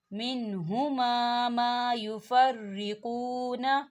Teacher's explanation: واو ساکن ہے، واو ساکن سے پہلے پیش ہے، تو یہاں واو مدہ ہو رہا ہے، 2 حرکت کی برابر کھینچ کے پڑھیں گے